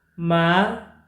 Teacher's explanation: Ma, falling pitch, mean to scold.